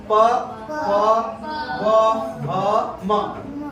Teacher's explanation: ऊपर नीचे का ओठ टच करता है, छूता है। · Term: ओष्ठ व्यंजन